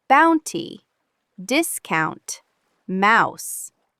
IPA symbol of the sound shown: aʊ